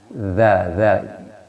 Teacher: Tapi kalau zal, lidah kita ujungnya digigit atau dikenakan sama gigi, zal. Kalau nun tidak dikenakan dengan gigi, tapi dikenakan dengan langit-langit atas ya, bagian depan.